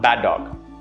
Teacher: i linked these two and i dropped one of the d sounds